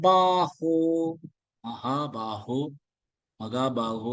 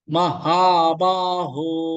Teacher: க எல்லாம் வரக்கூடாது ஹ தொண்டையிலிருந்து வரணும்